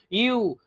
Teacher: ইউ উচ্চারণ করতে গিয়ে দেখো তোমার ঠোঁট দুটো একদম বেরিয়ে যাচ্ছে, তাই না, সরু হয়ে যাচ্ছে।